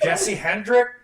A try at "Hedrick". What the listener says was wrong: Hedrick, no N.